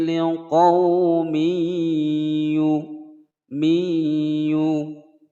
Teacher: ada kasratain bertemu dengan huruf ya. Hukum bacaan idgham bi gunnah dimasukkan dan didengungkan selama 2 ketukan.